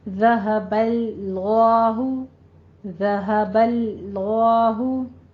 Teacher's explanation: پہلے لام کو پر نہیں کرنا، اس کو باریک ہی رکھنا ہے، دوسرے کو پر کرنا ہے